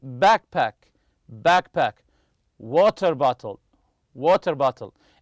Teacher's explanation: they're made of two separate nouns the stress always remember this the stress goes on the first part of the compound noun